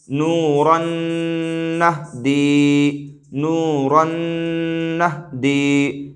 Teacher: یعنی را کو نون سے ملا کر کے پڑھیں گے، اسی ملانے کو ادغام کہتے ہیں، لیکن ہم غنہ کے ساتھ ملائیں گے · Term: ادغام مع الغنہ